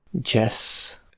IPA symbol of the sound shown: d͡ʒ